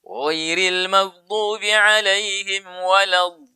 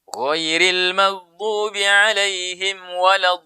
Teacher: Nanti dalam pembahasannya namanya nabro, tekanan ya. Dallin, berikan angkat suara sedikit baru tekan. Dallin. Jangan lama-lama.